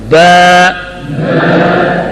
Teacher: ہونٹوں کے تری حصہ کو آپس میں سختی کے ساتھ ملانا, اور 1 الف کے برابر لمبا پڑھنا. با, اس سے زیادہ بھی نہیں اور اس سے کم بھی نہیں.